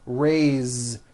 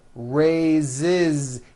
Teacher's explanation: even though it is spelled with an S, it's pronounced with a voiced Z.